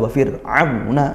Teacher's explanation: Wa fir'auna, di situ ada ain fathah diikuti waw sukun juga, maka ainnya ditempatkan, makhrajnya dilafalkan dengan baik. Kemudian fathah diikuti waw sukun dibaca lin ya, tidak perlu menghentak sekali.